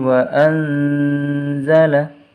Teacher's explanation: nun sukun bertemu dengan huruf za harus dibaca samar